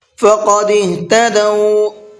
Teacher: قاف کو پر کر کے پڑھنا ہے اور ہا کو حلق سے سینے کی طرف سے نکالنا ہے۔ اس کے اندر ایک بھاری سی آواز ہوتی ہے، اس بھاری آواز کے ساتھ میں پڑھنا ہے۔